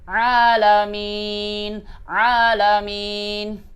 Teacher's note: tatkala kita menyebutkan huruf ain, jangan sampai berubah drastis, berubah menjadi huruf alif, ya. Jangan sampai, ya, berubah menjadi huruf alif.